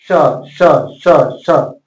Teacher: तालव्य स बोलेंगे तो तालु से बोलेंगे, आपका जीव तालु में सटना चाहिए